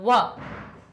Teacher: व कंठ से भी निकलती है और ओष्ठ से भी निकलती है, तो व हमारा ओष्ठ वाला वर्ग हो जाएगा व।